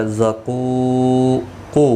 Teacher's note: واو مدہ ہے، ایک الف کی مقدار کے برابر کھینچ کر پڑھیں گے